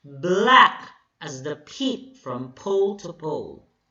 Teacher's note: So black is stressed, as unstressed, followed by stressed syllable, then unstressed, stressed, unstressed, then stressed.